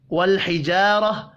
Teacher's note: لام ساکن پر قلقلہ نہیں کرنا